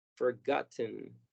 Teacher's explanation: vamos a tratar de pasar de la T a la N sin pronunciar ningún sonido en medio, y como forzosamente tenemos que hacer un sonido, pues vamos a reproducir sin darnos cuenta el sonido schwa